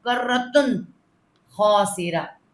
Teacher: اس میں اخفا غنہ نہیں ہوگا، نون کا اظہار ہوگا. ٹھیک ہے، اظہار غنہ کہتے ہیں اس کو.